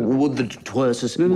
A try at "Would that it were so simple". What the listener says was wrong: No, you seem to be lingering. It's interminable, the were. I'm wondering when it'll end. And we shouldn't be wondering, should we?